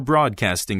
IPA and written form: ˈbrɔːdkɑːstɪŋ (broadcasting)